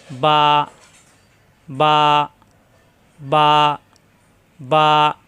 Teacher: বা এর উচ্চারণ দুই ঠোঁট থেকে বা মিলানো ঠোঁট ছেড়ে দিলে হয়ে যাবে বা